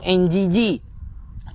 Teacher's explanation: Nun berjumpa dengan qaf, ikhfa hakiki. Dia kena dengung NGG.